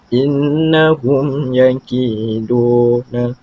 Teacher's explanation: Di mana izhar syafawi ni hum yakiduna, hum tanpa ada dengung dan mesti jelas. Sebab izhar itu maksudnya nyata, jelas.